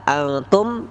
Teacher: Nun mati bertemu ta, antum, itu ikhfa, dibaca samar-samar